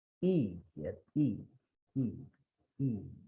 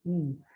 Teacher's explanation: if I say E, it is coming from the front of my mouth